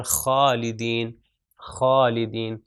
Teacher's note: یہ آپ غین اور خا کا دیکھ سکتے ہیں کہ جب آپ اس کو تلفظ کریں گے، پروناؤنس کریں گے تو غین اور خا تھروٹ کے اوپر والے حصے سے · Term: ادنی الحلق